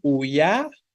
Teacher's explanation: fuerte la i o la a decimos uia decimos uia no vean que la fuerza va sobre la i de forma concreta